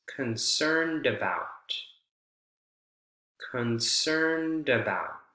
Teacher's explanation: With all of these, the final consonant sound of D or T transfers over and is almost the beginning of the next word